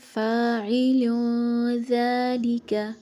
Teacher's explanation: ہم نے تنوین کی آواز کو ظاہر نہیں کرنا، تنوین کی آواز کو چھپا کر پڑھیں گے، لیکن لائٹ اخوا کے ساتھ۔